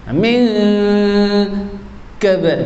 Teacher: Huruf kaf itu tipis, maka dengung juga tipis.